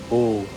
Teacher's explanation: This is a compound vowel combining a and u. The mouth opens at the throat and rounds forward at the lips.